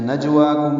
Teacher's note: واو کو دو حرکات لمبا کرنا ہے